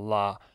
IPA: la